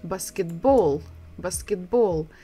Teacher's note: Again, we're stressing the final syllable, the last syllable.